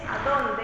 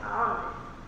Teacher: la d cuando está entre vocales es mucho más laxa